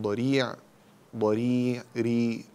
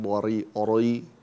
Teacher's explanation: الراء هنا مكسورة مرققة، لا تفخم، لا تقول ضريع ري، لا ري ري، ضريع.